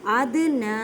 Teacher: ادنا, اد, دال کو ہلا کر پڑھیں, کلکلہ کا قاعدہ کریں. ادنا, نون پہ کھڑی زبر ہے, ایک الف کی مقدار میں کھینچ کر پڑھیں